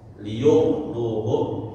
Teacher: walaupun tebal rnya jangan seperti Bahasa Indonesia R begitu ya